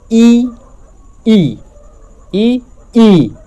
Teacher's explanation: से होकर व तालू में जाएगी तालू में सटे गी ऊपर तो इ का उच्चारण स्थान है तालू